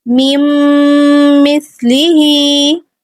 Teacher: ہا پہ کھڑی زیر ہے تو 2 حرکات ہم اس کو اینڈ پہ کھینچیں گے